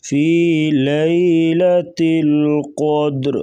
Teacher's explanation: قاف کو موٹا کریں گے اور دال کے اوپر قلقلہ کریں گے